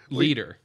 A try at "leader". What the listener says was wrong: leader. Your D sounds like a T.